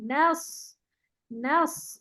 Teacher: सौद मोटा होगा, अच्छा नून नहीं मोटा होगा